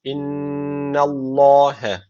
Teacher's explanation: Allah lafzı da kalın okunacak neden kalın okunuyor Çünkü öncesindeki harfin harekesi üstte Dolayısıyla öncesindeki harf üstten bağlandığı için kalın okunacak innallahe bu şekilde